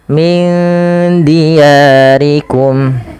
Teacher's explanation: huruf dal itu makhrajnya dari ujung lidah kita yang bertemu dengan perbatasan antara gigi atas dan gusinya.